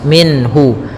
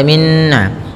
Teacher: nun sukun bertemu dengan ha yang mana Ha termasuk huruf-huruf yang kita keluarkan dari alhalq itu tenggorokan kita maka suara nunnya harus jelas minhu tidak boleh ditahan tidak boleh minhu ya tidak boleh Minna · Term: izhar halqi